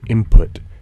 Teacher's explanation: But when I pronounce N as M before P in input, that's a partial assimilation. The two sounds are both bilabial, but one's a nasal and the other's a plosive.